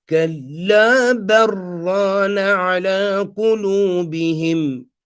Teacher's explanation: So here we're doing idgham of the lam into the ra